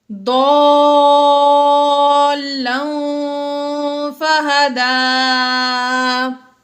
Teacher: تنوین کے بعد فا حروف اخفا میں سے آ گیا اس لیے ہم نے یہاں پر غنہ کیا۔